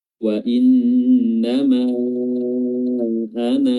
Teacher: ketika kita waqaf pada lafaz ana, maka alifnya ada terbaca panjang